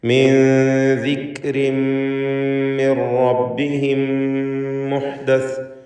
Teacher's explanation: റബ്ബിഹിം എന്നതിലെ സാക്കിനത്ത് മീം ശേഷമുള്ള മീമിൽ പൂർണ്ണമായും ലയിപ്പിച്ച് മണിച്ചുകൊണ്ട് ഉച്ചരിക്കുക. ഇദ്ഗാം ഷഫവി അല്ലെങ്കിൽ ഇദ്ഗാം മിസ്ലൈന് സഗീർ, മുതമാസിലൈന് സഗീർ എന്നൊക്കെ പേര് നൽകാവുന്ന ഇദ്ഗാം ചെയ്ത് ഷദ്ദുള്ള മീമിനെ മണിച്ച് ഉച്ചരിക്കുക.